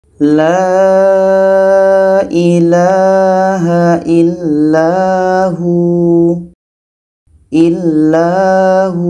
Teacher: Panjang 2 harakat. Waw ini pendek, maka kita matikan, dan sebelumnya ada huruf yang berbaris di depan, menjadi panjang waw mati.